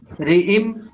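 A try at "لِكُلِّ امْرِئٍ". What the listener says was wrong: রিম এই যে ইম গুণনা হবে গুণনা এই যে গুণনা না না রি তে টান হবে না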